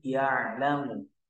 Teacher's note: Itu normal saja dibaca pendek semua itu tidak ada mad di sana, tidak ada gunnah juga.